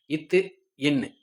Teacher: மேல்வாய் பல்லோட அடியை நாக்கின் நுனி பொருந்தறனால பிறக்குது. நாக்கின் நுனி பொருந்தறனால பிறக்கிறது.